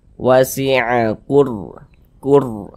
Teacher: tanda sukun sebelum ro sukun ini ada harakat domah nih maka huruf ro sukunnya ini dibaca tebal dibaca tkhim sehingganya pangkal lidah kita itu ya naik terangkat ke atas ketika Kita mengucapkannya